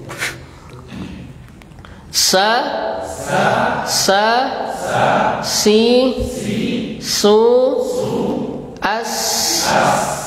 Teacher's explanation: Kita praktek huruf sinnya. Sa, si, su, as. Nah, perhatikan ada desis as.